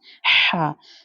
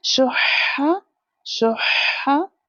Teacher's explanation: ha comes from the middle part of the throat